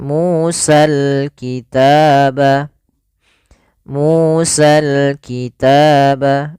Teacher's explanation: dibaca dengan sempurna huruf lamnya dan tidak ada dihilangkan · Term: alif lam qamariyah